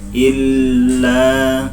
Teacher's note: illa ini ada tasdid juga, bacanya juga ditahan ya, 2 ketukan tasdid ya